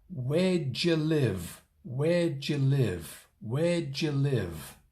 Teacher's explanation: But in natural spoken, fairly fast English, we only pronounce 3 syllables. That's the stress pattern. 3 syllables. The first and last have the stress. Maybe your teacher has shown you this stress pattern before, using a big circle, a small circle, and another big circle.